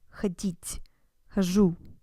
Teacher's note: the infinitive and the я form have the stress on the end, ходить, хожу, whereas all the other forms are stressed on ходишь, ходит, etc.